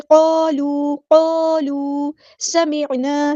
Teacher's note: सीन की सीटी हम वाज़ेह करेंगे। वस्मऊ वाव को हमने सीन के साथ मिला देना है। · क़ालू समिअना अलिफ मद आ गया तो मद इसलिए करेंगे, क़ाफ़ हमारा हेवी लेटर है पूरा अदा करेंगे और ये अलिफ भी हमारा हेवी लेटर बन जाएगा। वाव मद्दा है तो यहाँ पर मद इसलिए करेंगे, एक अलिफ के बराबर लंबा करेंगे।